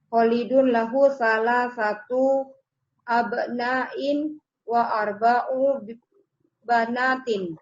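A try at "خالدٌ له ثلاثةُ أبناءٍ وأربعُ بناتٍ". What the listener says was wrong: Barakallahu fiik. Ahsanti.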